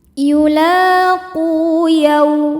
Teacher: Yaw ada harfulin sebab ada waw sukun sebelumnya baris fathah. Cara bacanya lembut atau lunak.